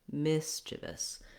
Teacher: Really, the miss is going to be longer than the chivous syllables put together. · So watch out that you don't want any kind of E, tense E sound anywhere in this word mischievous. You also want the miss to be held longer and the chivous to be shorter and have reduced vowels. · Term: stressed syllable, relaxed I sound